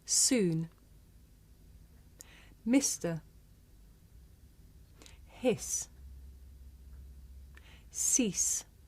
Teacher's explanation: this is a voiceless consonant you can hear it at the beginning of the word soon in the middle of the word mister at the end of the word hiss and at the beginning